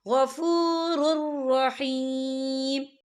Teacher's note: فَإِنَّ اللَّهَ غَفُورٌ رَحِيمٌ، یہ دیکھیں غفور، را کے پر تنوین ہے، تنوین کے بعد جو ہے را آ رہا ہے اور را جو ہے حروف یرملون میں سے ہے تو یہاں پر ادغام ہوگا اور ہم اسے بنا غننے کے پڑھیں گے، ہم یہاں غنہ بالکل نہیں کریں گے۔